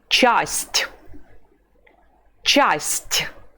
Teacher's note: You say ch at the beginning of the word, and then there is the soft sign that palatalizes the letter t. So we say first ch and then t.